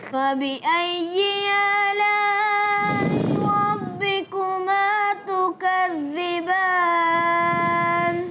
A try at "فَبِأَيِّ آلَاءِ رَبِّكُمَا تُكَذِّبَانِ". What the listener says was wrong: ناک سے پڑھنے سے بچانا ہے، فَبِأَيِّ آلَاءِ رَبِّكُمَا، یہ کیا ہے؟